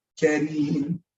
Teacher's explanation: Don't roll the R, right? And in Arabic, you don't pronounce the R harshly if it has a kasra, if it has that E sound on it.